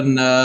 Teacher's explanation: اسے ایک الف کے برابر لمبا کرنا ہے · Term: الف مدہ